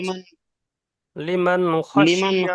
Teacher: নুন সাকিনের আওয়াজকে বিনা গুণনায় জাহির করে তাড়াতাড়ি পড়তে হবে